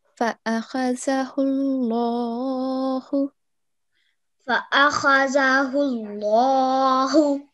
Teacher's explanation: make the lam a bit thicker